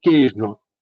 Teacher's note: esse i é uma semivogal e o e é a vogal